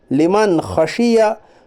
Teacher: नून साकिन की आवाज़ को ज़ाहिर करके बिल्ला गुन्ना के जल्द पढ़िए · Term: इजहार